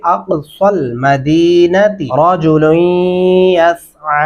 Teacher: صاد پڑھتے ہوئے ہمارے ہونٹ گلائی کی شکل میں ہو رہے ہیں، تو یہاں پہ اقصل مدینتی رجل یسعی، یہاں پہ لام اور یا کے درمیانی حصے میں غنہ بھی ہوگا، رجل یسعی۔